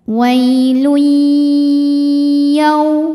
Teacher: Cara bacanya tanwin dileburkan ke ya. Jadi bunyinya bukan N lagi, melainkan bunyi Y ya, dan kita tahan. Dengung ya. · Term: idgham bi gunnah